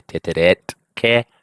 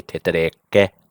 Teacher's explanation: And you'll notice sometimes there'll be a change of the final letter. If it's a T and it follows with a K, it'll change to a K too. So we don't say titeret, ke, because it's too hard to say.